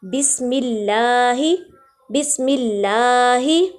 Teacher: اللہ کے لام کو باریک پڑھنا ہے